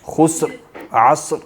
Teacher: سین پہلے سین کے مخرج پہ آواز کو بڑھائے بغیر پھر فوراً را کے مخرج پہ منتقل ہو جائیں، پھر اس کے بعد جب مخرج ادا ہو جاتا تو آواز کو چھوڑ دیں.